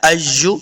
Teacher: یا پہ جو شد ہے یہاں پہ سختی سے پڑھنا ہے